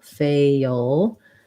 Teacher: We want to have our tense A sound, fail. And then this L is a dark L. So we kind of have a schwa before it